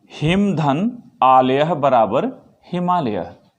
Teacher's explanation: हिम में ह्रस्व अ है, जबकि आलय का पहला आ है, दीर्घ अ है, और इन दोनों के स्थान पर विकार से आ हो रहा है, हिमालय, यहाँ आ रहा है।